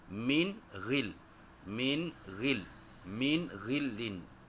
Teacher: nun sakinah atau nun mati berjumpa dengan ghin, maka nun tu dibaca dengan jelas dan nyata.